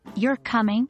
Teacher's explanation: yes/no questions often end with a rising intonation, as in, You're coming? with the voice going up on coming.